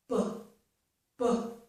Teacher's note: For this sound, it's b here, the letter B, my teeth are not used at all, and my lips are not open. My lips close. B, b. And to make the sound, I open my lips and push out the air.